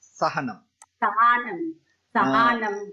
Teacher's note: There is no long vowel sound for the letter ha. It is just ha only.